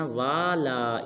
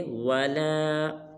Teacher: واو کو لمبا نہیں کرنا